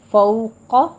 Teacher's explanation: فوق فو میں واولین ادا کیجیے، ہونٹوں کو ناتمام گول کرنا ہے اور قاف کو پر پڑھنا ہے